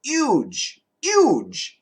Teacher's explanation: and they do sometimes in the UK also huge huge uh without the H but I do recommend the H sound